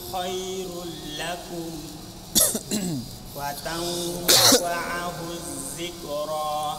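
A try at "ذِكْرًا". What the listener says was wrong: Hati-hati hurufnya zal bukan zai. bukan Ini dia, ini bacanya ini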